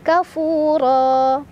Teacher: Ra dibaca secara tafkhim karena ra berbaris di atas, jadi ditebalkan. Ra mad'iwad karena ada fathah tanwin yang diwakafkan. · Ra mad'iwad karena ada fathah tanwin yang diwakafkan. Cara bacanya, fathah tanwin diganti fathah dan dipanjangkan dua harokat.